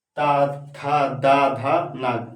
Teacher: हमारा जीभ क्या होता है, दांत से टच करता है